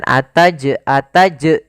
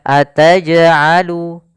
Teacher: tidak sampai ada tambahan huruf hamzah Maka jangan sampai teman teman-teman membacanya dengan ataj ataj tapi dia